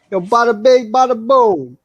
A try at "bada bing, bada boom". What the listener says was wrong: Yeah, it's not bala. Yo, Monday. Bada. You say bala again, I'm going to slap you.